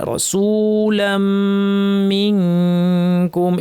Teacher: রসুলাম লাম গিয়ে সরাসরি মিমকে ধরবে, মিমের উপর তাসদীদ লম্বা গুণা